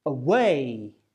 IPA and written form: әˈweɪ (away)